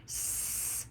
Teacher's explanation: So we start with our index finger and our thumb, because we're only going to use one finger because is a voiceless sound. If you put your hand on your throat, you'll be able to tell that there's no vibration when we say s.